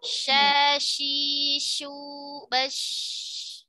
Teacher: Shin, tengah lidah mengangkat mendekati langit-langit.